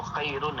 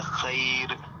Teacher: تو خیرن سے خیر ہو گیا وہ، تو آخر میں 2 زبر ہے، یہ 2 پیش ہے جب ہم نہیں رکتے تو خیرن ہے، لیکن اسی کے اوپر جب ہم رک جائیں گے تو آخر میں جزم آ جائے گا خیر